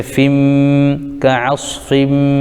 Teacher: تنوین کے بعد حروف یرملون میں سے میم آ رہا ہے، اس لیے ادغام یرملون مع غنہ ہوگا تو فا کو میم میں ملائیں گے